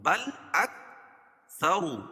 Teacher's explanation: را کو پر پڑھیں گے، کیوں؟ را کے اوپر پیش ہے